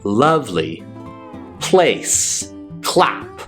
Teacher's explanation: if I say lovely, lovely with a clear L, you'll notice my tongue is flicking out of my mouth.